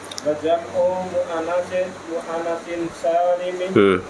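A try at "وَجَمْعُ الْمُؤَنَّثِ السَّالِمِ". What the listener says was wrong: Ada alif lamnya Pak nggih.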